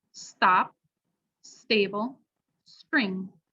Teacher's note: a slightly less aspirated t is after s